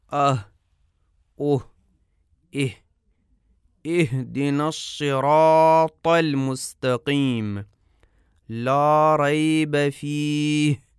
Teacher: ہا کا مخرج حلق کی انتہا سے ہا ادا ہوتی ہے۔ اس طرح کے آواز کی دو تاروں کے کانپنے سے خارج ہوتی ہے۔ دونوں تاریں بند نہیں ہوتیں لیکن آپس میں ایک دوسرے کے بہت قریب ہوتی ہیں۔